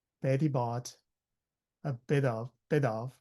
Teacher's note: Bit of together is one word. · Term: link the words